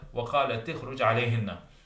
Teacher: So we have a cluster of two consonants. So the cluster reduction rule kicks in, and the ta is given a kasra.